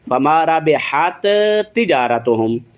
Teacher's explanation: تا کو تا میں ادغام کیا تو اس وجہ سے تجارت کی تا پر تشدید آ گئی